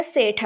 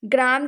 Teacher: ਸ਼ਬਦਾਂ ਦੇ ਆਰੰਭ ਵਿੱਚ ਆਉਣ ਵਾਲੇ ਸੰਯੁਕਤ ਵਿਅੰਜਨ ਵਿੱਚੋਂ ਇੱਕ ਜਿਹੜੇ ਹੈਗੇ ਸੀ ਲੁਪਤ ਹੋ ਗਏ, ਜਿਹਨੂੰ ਅਸੀਂ ਵਿਅੰਜਨ ਗੁੱਛੇ ਕਹਿ ਦਿੰਦੇ ਹਾਂ ਨਾ, ਉਹ ਵਾਲੇ।